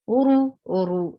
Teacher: circle your lips, and ra is heavy. Uru, who is four haraka, two haraka long.